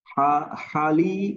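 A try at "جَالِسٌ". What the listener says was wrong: না, জিম। জালিসুন, জালিসুন।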